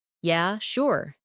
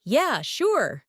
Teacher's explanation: Yeah, sure, in a flat tone, it might mean they're not really interested. But if they say, Yeah, sure, with excitement, it's genuine agreement. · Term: intonation